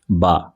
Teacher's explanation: دونوں ہونٹوں کے استعمال میں ہمارے ہونٹ کا تھوڑا سا اندرونی حصہ لگ رہا ہے جہاں پر ہمارا یعنی ہونٹ تر رہتا ہے، گیلا رہتا ہے.